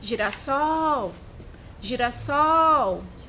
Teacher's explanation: Nós temos o sol, é a sílaba mais forte. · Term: sílaba tônica